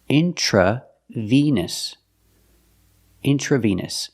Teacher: The word vein is pronounced with a long A sound, like day and say, vein. And intravenous, the E in the middle, makes the long E sound, like green beans.